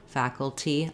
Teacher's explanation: we also again have first syllable stress